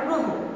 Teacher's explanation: শব্দের প্রথমে যদি অযুক্ত র ফলা থাকে, সেই অ এর উচ্চারণ ওকারের মতো হবে।